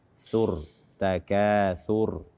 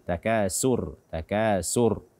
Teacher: Sebagaimana pada pertemuan-pertemuan yang lalu kita terangkan bahwa tha ini keluarnya dari ujung lidah bersentuhan dengan ujung gigi seri atas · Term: huruf tha